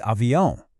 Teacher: that ão sound is classic Portuguese. It's a nasal sound.